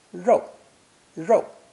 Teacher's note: It's pronounced 4th tone, rou, rou, with that retroflex R sound that we've seen in previous lessons.